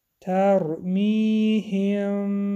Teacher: هم بعد از حرف میم حرف با آمد، در اینجا اخفای شفوی حرف میم را داشته از دماغ می خوانیم. ترمیهم جا مد طبیعی مقدار 2 حرکت می کشیم.